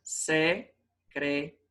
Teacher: A sílaba tônica tá no ri.